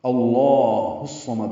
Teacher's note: ہا کو اکثر حلق سے ادا کریں گے، صاد سے ملائیں گے